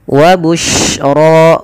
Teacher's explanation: yang lebih kita tonjolkan adalah sifat tafasyinya, intisyarus sautnya